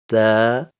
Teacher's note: the tip of the tongue touches the root of the upper front two teeth